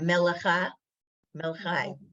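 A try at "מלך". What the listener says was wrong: No, just melech. Because the chaf, the final chaf, the 2 dots it ends the word that you don't do anything in there.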